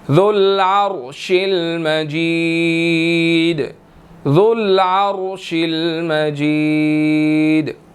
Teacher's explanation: را جو ہے وہ ساکن ہے، موٹا ادا ہوگا اس کے پیچھے کیونکہ عین کے اوپر زبر ہے، ٹھیک ہے، اس وجہ سے.